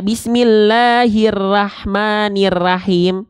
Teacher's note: A tapi kenapa ro dibaca tidak ra nah gitu Kenapa karena huruf ro ketika fathah harus dibaca dengan mufakhamah harus dibaca dengan keadaan yang te tebal